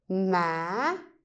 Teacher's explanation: the first way to say the up tone is you go low and then you raise it up.